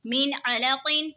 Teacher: یہاں پہ دیکھیں نون ساکن ہے، نون ساکن کے بعد حروف حلقی کا عین آ رہا ہے تو اظہار ہوگا، یعنی غنہ نہیں کریں گے۔